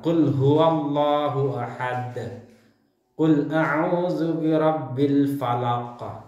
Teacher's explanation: pantulan suara huruf qalqalah lebih besar karena huruf qalqalahnya sebenarnya hidup tapi dimatikan ketika wakaf atau menghentikan bacaan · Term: qalqalah kubra